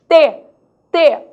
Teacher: Língua dental. A língua encosta nos dentes.